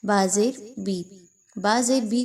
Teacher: بی کو بعض اوقات لوگ بے پڑھ رہے ہوتے ہیں، مجہول نہیں پڑھنا